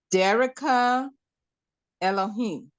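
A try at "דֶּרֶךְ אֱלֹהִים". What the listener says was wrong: Where do you see an A at? You're saying what? There's no A. So there's only de.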